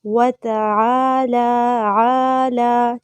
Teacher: عین وسطی حلق سے ادا کریں گے، ایک الف کے برابر لمبا کرنا ہے